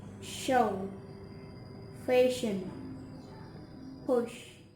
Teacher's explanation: the front part of the tongue on the alveopalatal area